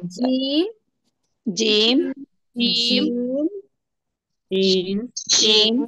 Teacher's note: جیم ہے زبان کی بیچ اور اوپر کے مقابل کے تالو سے، یعنی جو زبان کا بیچ ہے اس کے اپوزٹ اوپر جو ہے اس کے تالو سے ادا ہوتا ہے نا؟